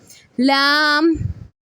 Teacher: जब जुबान का किनारा साइड वाला हिस्सा या दाएं जानिब या बाएं जानिब चारों दांतो के मसूड़ों को लगे तो लाम अदा होगा